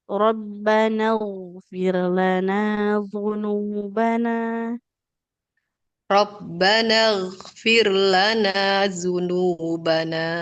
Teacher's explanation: Ibu ghainnya lebih tebalkan lagi.